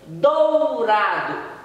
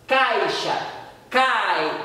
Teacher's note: esse I é uma semivogal que apoiou o A também na pronúncia. Então toda vez que tiver as duas vogais separando a sílaba e elas ficam juntas, damos nomes de ditongo e uma vai ser sempre semivogal, uma apoiando a outra.